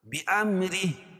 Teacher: را باریک پڑھی جائے گی کیونکہ را کے نیچے زیر ہے